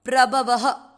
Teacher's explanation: प्र, भ और व दोनों अक्षर पूरी, दोनों में अ मिक्स करना है, प्रभव। व में अ की मात्रा तो विसर्ग को पढ़ना है ह